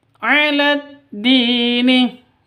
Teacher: diperpanjang dua ketukan karena ada sukun ya yang didahului oleh kasrah